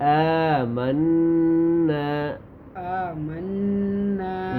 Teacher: یہ نون مشدد ہے بیٹا, یہاں پہ غنہ ہوگا · الف کو موٹا نہیں کریں گے ٹھیک ہے, باریک